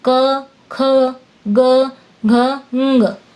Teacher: क वर्ग में क, ख, ग, घ, ङ व्यंजन होते हैं। इनको बोलते समय आवाज कंठ से मतलब गले से निकलती है।